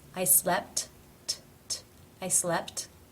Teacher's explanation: the first tee finishes a word but it is part of a consonant cluster therefore it is pronounced as the actual t